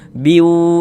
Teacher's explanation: suaranya kita tahan, kita panjangkan saja sepanjang 2 harokat.